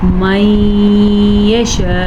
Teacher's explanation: رکتے ہوئے حمزہ کی آواز آنی چاہیے